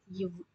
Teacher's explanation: மேல்வாய் பல்லை கீழ் உதடு பொருத்துவதால் பிறப்பது